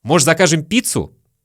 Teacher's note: слово «может» мы тоже часто произносим просто как «можь»